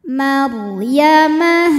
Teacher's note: huruf ro sukun dibaca secara tafkhim karena harakat huruf sebelumnya fathah